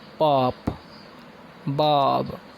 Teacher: these are the sounds produced with two lips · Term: bilabials